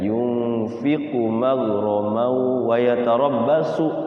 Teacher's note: Kayak yunfiqu tuh ku-nya pendek.